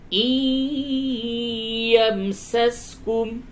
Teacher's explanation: نون ساکن کے بعد یا ہے ادغام مع الغنہ ہوگا